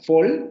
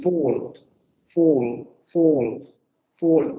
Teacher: tienes que mantener la labialización, pero está más abierta que nuestra O.